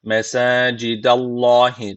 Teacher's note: Allah lafzı burada kalın okunacak Çünkü öncesindeki harfin harekesi üstte